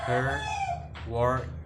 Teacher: It is a mid-central rounded vowel.